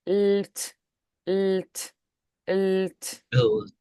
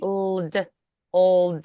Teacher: both the L and the T and the L and the D require the tongue to be positioned in the front, that tip touching the alveolar ridge. So the tongue is already forward, but transitioning between them requires a very quick and precise movement to avoid that dropping and adding the extra sound.